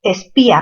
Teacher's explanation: espía, mayor fuerza en la sílaba pi